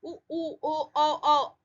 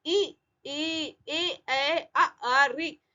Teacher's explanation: तो ये वर्तुल मीन्स होठ गोल हो रहा है, होठों की स्थिति जो हो रही है गोल हो रही है।